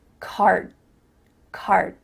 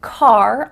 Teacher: your mouth is making the shape of that D sound, but it's not making the vibrations happening. You're not actually making a D sound, but your mouth is making that shape.